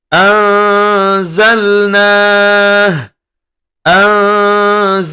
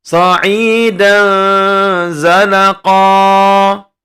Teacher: Huruf za, nun sukun bertemu dengan za, bunyi dengung dan samarnya seimbang dan kita tahan selama dua harokat.